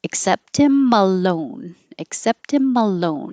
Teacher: because the EX and the AC are not stressed, they will change to I